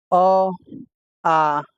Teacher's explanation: ये कंठ से ही बोला जाता है